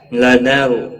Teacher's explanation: را ساکن سے پہلے زبر ہے، اس لیے را ساکن موٹا پڑا جائے گا۔